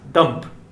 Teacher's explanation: then detonated on the tongue and good flying of the lips it begins and ends by abruptly stopping the airflow and blocking the vocal tract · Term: plosive sound